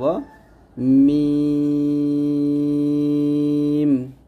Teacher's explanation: তারপর লাম, এগুলো সহজ হরফ, জিহ্বার আগার কিনারা উপরের দাঁতের সাথে লাগবে, লাম। মিম দুই ঠোঁটের শুকনো অংশ মিল করে আমরা উচ্চারণ করব